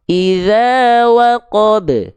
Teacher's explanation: karena berada di akhir ayat pantulannya lebih kuat, namanya qalqalah kubro. Masya Allah, pantulannya lebih kuat atau pantulannya lebih besar.